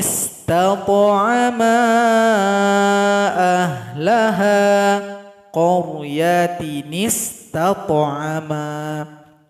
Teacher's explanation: Hamzah washol nggak dibaca lagi karena sudah digantikan oleh non kecil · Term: nunul goyah, nun wiqayah